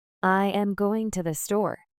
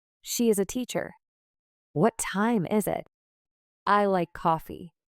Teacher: For statements and wh questions, your voice usually falls at the end. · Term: falling intonation